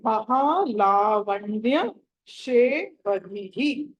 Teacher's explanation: ధి తర్వాత విసర్గ ఉన్నది కాబట్టి దాన్ని ధిహి అని పలకాలి.